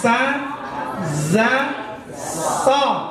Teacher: Ujung lidah bertemu dengan gusi gigi bagian bawah.